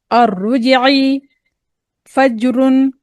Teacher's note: अब क्योंकि जीम जो है साकिन हालत में भी है और यह हुरूफ-ए कलकला में से भी है। तो जीम को हम कलकला भी देंगे। · الرجعی، اب کیونکہ را موٹا پڑھیں گے، ٹھیک ہے، جیم کے اوپر ہم جو ہے ساکن حالت میں ہے، اور عین کو جو ہے حلق سے نکالیں گے، حروف حلقی ہے